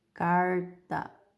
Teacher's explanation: o que acontece com a nossa língua ao pronunciarmos esse R aqui? Ela meio que enrola para trás, tá? Ele é um R que alguns autores chamam de R caipira. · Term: R retroflexo